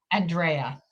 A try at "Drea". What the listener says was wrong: Not Andrea, just Drea. Drea.